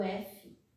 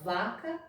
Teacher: A diferença é que um vibra e outro não o f é só um ventinho e o v vibra garganta Então essa é a diferença do surdo por sonoro E se